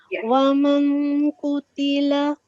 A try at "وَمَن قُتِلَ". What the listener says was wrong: No, you have to conceal the noon sound.